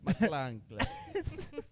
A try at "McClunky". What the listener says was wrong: He keeps adding an extra letter.